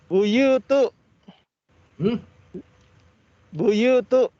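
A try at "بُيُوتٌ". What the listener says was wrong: Buyutun. Pakai tanwin.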